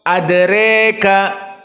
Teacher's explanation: Dan al-imalah al-kubra mendekati kepada kasrah